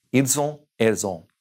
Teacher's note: We're carrying over that S because on begins with a vowel.